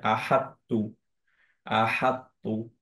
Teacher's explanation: যদি আহা শুধু এটুকু পড়তাম তো আমরা আহাত পড়তাম, কিন্তু এখন আমরা আহাত এরকম পড়বো না, আমরা পড়বো হচ্ছে আহাত্তু, আহাত্তু। আহা প্রথম তো তটা হেভি, পরের তাটা হালকা, কিন্তু আবার কলকলা দিলাম না।